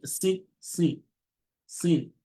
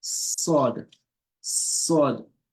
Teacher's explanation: So there's a less heaviness in pronouncing sin compared to sod.